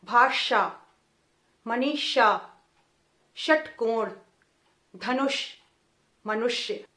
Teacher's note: तो जीभ जहां टकरा रही है ट वर्ग के उच्चारण में ठीक वैसे ही आपका मूर्धन्य श का उच्चारण होना है।